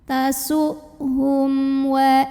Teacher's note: Maka mim sukun ini dibunyikan dengan idhar atau jelas. Jadi ini bunyinya tidak ditahan. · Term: idhar syafawi